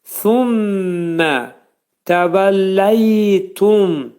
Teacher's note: Thummə pəltək sə hərfi. Mim, 2 dənə şəddəli mim hərfi. İdğam mə'al-ğunnə. Thummə, burunda 2 saniyə sıxırıq.